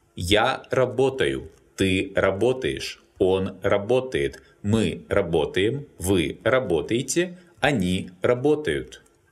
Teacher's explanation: here the stress falls on the stem in all forms and all endings are unstressed. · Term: Pattern A